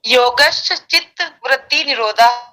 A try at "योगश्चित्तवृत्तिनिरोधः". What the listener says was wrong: योगश से वो अलग दूसरी ध्वनि नहीं आनी चाहिए, योगश बस, योगश।